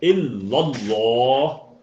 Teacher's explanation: ایک چھوٹی سی بات میں یہاں دہرا دوں، کل ہم نے بات کی تھی کہ اللہ جب لکھا آئے اس سے پچھلے حرف پہ اگر زبر ہوگا تو آپ نے کیا کرنا ہے، اس آواز کو تھوڑا بھر کے پر کر کے بھاری کر کے ادا کرنا ہے